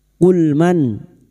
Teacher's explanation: Qul man, nun sukun bertemu ha idhar halki. Nun sukun dibaca jelas tanpa mendengung. Nun sukun atau tanwin yang bertemu dengan 6 huruf ini termasuk huruf ha, maka nun sukun dibaca jelas tanpa mendengung.